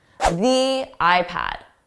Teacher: Notice how it sounded more like a stressed the with that long E.